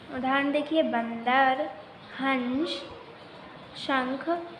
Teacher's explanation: तो अनुस्वार का उच्चारण नाक से किया जाता है